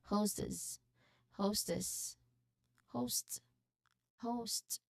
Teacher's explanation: remember to emphasize on the first part, host, and then s ending should be soft, not a hard s sound.